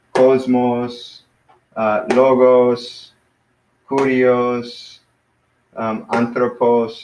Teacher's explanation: most all these have the accent on the first syllable